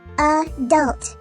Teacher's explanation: Notice that the word adult has an accented or louder syllable at the end of the word. The schwa sound only occurs in the unaccented or quieter syllable at the beginning of the word.